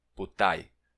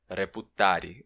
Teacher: Esses verbos que acabam em ri, você pode tirar o r.